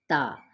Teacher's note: ثنایا اولیہ یعنی سامنے کے اوپر کے جو دانت ہیں تو زبان کی نوک کہاں پہ لگے گی؟ جا کے اس کی جڑ سے، اندر والی جڑ سے، ٹھیک ہے، تا۔